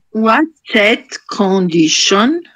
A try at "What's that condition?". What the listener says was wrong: Okay, good. Thank you.